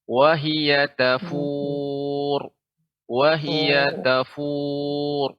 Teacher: Ada seperti pengucapan ro yang dia berharokat. Ya, akan tapi dibaca dengan sukun dan tebal.